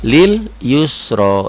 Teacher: Yusnya kosar, ronya tebel, tafkhim, ronya mad asli.